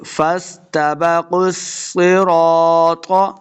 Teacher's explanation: قاف کو موٹا پڑھیں گے، قاف کو صاد کے ساتھ ملانا ہے. قاف اور صاد دونوں حروف مستعلیہ سے ہیں، ان کو ہم نے موٹا کر کے پڑھنا ہے.